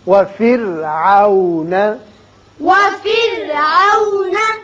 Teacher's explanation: را کو باریک پڑھیے اس لیے کہ پیچھے زیر ہے